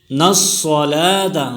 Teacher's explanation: صاد موٹی پڑی جائے گی، اور کڑی زبر کو کھینچ کر پڑھیں گے، اور وقف کی حالت میں اس گول تا کو ہا پڑھیں گے۔